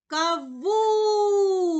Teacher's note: наголос падає на другий склад на склад вун